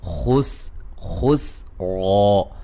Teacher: سین کو باریک اور را کو موٹا ادا کریں گے